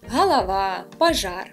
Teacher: Насамперед, звісно, у вуха впадає акання. Це звук А на місці ненаголошеного О.